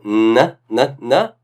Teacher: So notice that when you do n, the tongue is in the same place where the da is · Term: partial assimilation